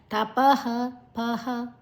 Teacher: ಪ ಆದ ನಂತರ ವಿಸರ್ಗದ ಉಚ್ಚಾರಣೆ ಹ